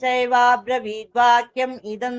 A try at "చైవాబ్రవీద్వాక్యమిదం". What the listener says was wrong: వాక్యమిదం అని కలిపి చెప్పాలి.